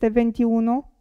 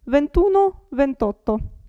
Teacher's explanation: You don't have to pronounce the last vowel, i or a.